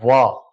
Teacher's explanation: वा जो है ये दंतोष्ठ ध्वनि है, दंतोष्ठ, दांत और होंठ के आलंबन से इनका उच्चारण होता है